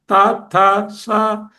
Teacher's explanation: అంచేత షా టా ఠా షా దంత్యాలు పళ్ళ దగ్గరికి వచ్చేస్తుంది నాలుక.